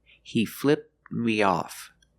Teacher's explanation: flip in the pass has a t sound flipped flipped but when that t sound is between consonants you don't really hear it he flipped me off the tongue goes up a little bit